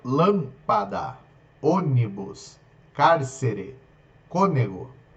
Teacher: todas a tonicidade estará na antepenúltima